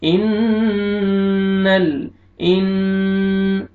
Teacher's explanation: نون مشدد ہے، غنہ کریں گے، نوز میں ساؤنڈ لے کے جائیں گے